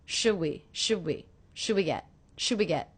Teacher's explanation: one of the things I noticed is I'm dropping the D sound